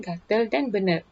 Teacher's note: Contohnya, kelainan pada sistem sebutan dialek Jawa di mana vokal depan luas A telah berubah menjadi vokal tengah E, seperti contoh kata gatal dan benar.